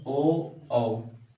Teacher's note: ओष्ठ ए ऐ कंठ तालव्य मतलब ए ऐ जो है हमारे कंठ और ताल दोनों से बोला जाता है। ओ औ कंठ ओष्ठ मतलब कंठ और ओष्ठ से दोनों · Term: कंठोष्